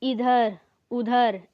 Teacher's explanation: ठीक है निरनुनासिक केवल मुंह से बोला जाता है जैसे इधर-उधर इसमें नाक का प्रयोग नहीं होता है